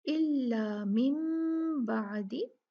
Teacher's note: जब भी हम देखेंगे कि नून साकिन और तनवीन के बाद बा आ जाता है, तो हम नून साकिन को मीम से बदल कर पढ़ते हैं। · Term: इक़लाब